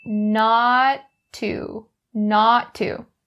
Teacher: Similar to the last phrase, the not ends with a t sound and to begins with a t. So drop one of the t sounds and say not to, not to.